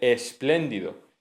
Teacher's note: Se dice solamente con el sonido S, que es el sonido alveolar fricativo sordo